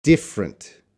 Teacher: The next one, we have two schwas. And we can cut them both. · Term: schwa deletion